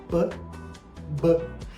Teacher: eles são articulados na ponta do lábio o Lábio fecha tranca o ar e abre